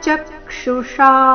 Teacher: ಚಕ್ಷುಷಾ ಚ ಮೇಲೆ ಆಘಾತ, ಕೊನೆಗೆ ಶಾ ದೀರ್ಘ ಮೂರ್ಧನ್ಯ ಶ ಇದೆ ಆಕಾರದೊಂದಿಗೆ.